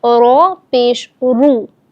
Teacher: اب یہاں پر آپ دیکھیں کہ رو کے اوپر پیش ہے، اس بات کو یاد رکھیں گے کہ جب رو کے اوپر پیش ہو تو بھی صورت میں ہم رو کو پر یعنی موٹا کر کے پڑھیں گے